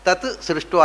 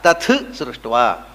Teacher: ಆದರೆ ಯಜುರ್ವೇದದಲ್ಲಿ ಇದಕ್ಕೊಂದು ವಿಶಿಷ್ಟವಾದಂಥ ನಿಯಮ ಇದೆ. ಏನು ಅಂದರೆ, ಸಕಾರ ಮುಂದೆ ಬಂದಾಗ ಮೊದಲನೆಯ ತಕಾರ ಉಂಟಲ್ಲ, ಅದು ಮಹಾಪ್ರಾಣ ಆಗುತ್ತೆ.